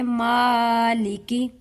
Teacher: اس کی لام کو ہم لمبا نہیں کریں گے، یعنی اس کے ساتھ یا کا اضافہ نہیں کریں گے، اسے ہم فوراً ختم کریں گے.